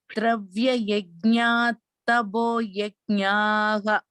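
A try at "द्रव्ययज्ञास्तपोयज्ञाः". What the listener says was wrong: That is also, this sa also should be heard. Dravya yajnastapo yajnaha.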